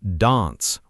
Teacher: >> But in British English, especially Southern British English, it's pronounced dance with a longer deeper A sound, almost like the A in father.